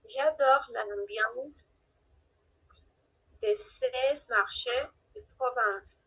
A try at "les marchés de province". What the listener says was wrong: Pero attention, on ne prononce pas la S, oui, no pronunciamos S.